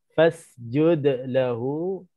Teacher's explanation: fasjud qalqalah sughra sebab huruf qalqalah ini di tengah-tengah bacaan.